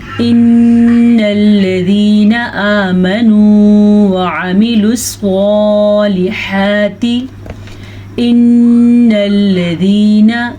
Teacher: نون کا غنہ ادا کریں اور آخر میں نون زبر نا کو لمبا نہیں کرنا